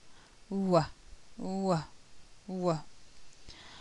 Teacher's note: it's a voice sound and there's hardly any air flow produced